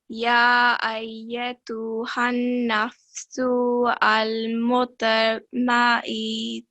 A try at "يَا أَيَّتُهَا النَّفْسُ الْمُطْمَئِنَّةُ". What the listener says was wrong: So we don't say su and then al. You can say al. So ya ayyatuha nafs.